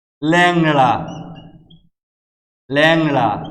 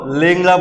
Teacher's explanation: শব্দের আদি বা শুরুর যে একার, এটি এ উচ্চারিত হবে, অর্থাৎ বিবৃত উচ্চারণ হবে